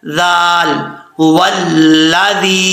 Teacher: زبان کا سرا اوپر والے دانتوں کے کنارے سے لگے تو ذال پڑھا جاتا ہے بغیر سیٹی کے